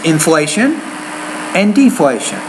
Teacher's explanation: when you put them together like that the first idea you want to put rising tone in the second one your tone drops a little bit